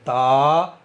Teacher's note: یہ زبان کی نوک اوپر کے دانتوں کی جڑ پر لگا کر کے تا ادا ہوتا ہے۔ بالکل اسی جگہ سے طا ادا ہوتا ہے، یعنی ان دونوں حرفوں کا مخرج سیم ہے لیکن لیٹر الگ الگ ہونے کی وجہ سے آوازیں ان دونوں کی الگ الگ ہونی چاہیے۔